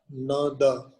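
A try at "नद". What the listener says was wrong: you can say na. Nada. Nada means the na seems to be long. So na, make it short. Na, da, nada. Otherwise, nada is long.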